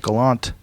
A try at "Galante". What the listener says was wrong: I would go with that E. Gotta pronounce that.